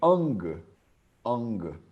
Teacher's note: E ele é o mais para trás de todos, né? Ele é o nasal que vem aqui do fora da garganta, debaixo da garganta.